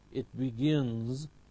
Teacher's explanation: all nasals are voiced so it's followed by z